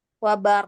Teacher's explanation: karena kita berhenti di wa barq dan qaf huruf qalqalah, maka harus terdengar pantulan suara